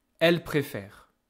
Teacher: You don't hear NT.